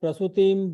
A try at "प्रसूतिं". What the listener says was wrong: not Prasudim. Prasutim. Prasu will be long. Kalat Prasutim, like that.